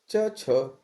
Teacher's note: च छ जो है तालव्य व्यंजन है